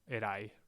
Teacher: That's a diphthong. The ai forms a diphthong, and the emphasis is on that syllable.